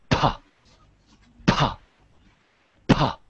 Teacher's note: When we make the P sound, we should have a very strong puff of air coming out. · if you don't have that strong of a puff of air coming out, people will often confuse your P for a B